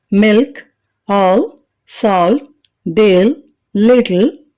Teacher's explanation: L sound పదాల చివరిలో గాని వోవెల్ తర్వాత గాని ఉంటే అది డార్క్ ఎల్ అవుతుంది